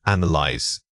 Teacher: Notice that the stress falls heavily on the first syllable. When you say this word, make sure your mouth opens wide for that initial h sound.